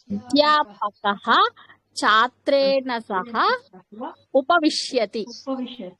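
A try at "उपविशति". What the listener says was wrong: విష్యతి కాదు, విశతి.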